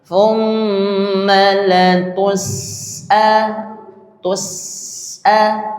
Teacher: sin itu bunyi nafasnya mengalir. Jadi jangan diputus ya.